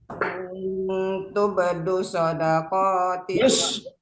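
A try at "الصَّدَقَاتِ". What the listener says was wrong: Dus, ada alif lam kan? Ada alif lam soundnya, jangan sampai hilang.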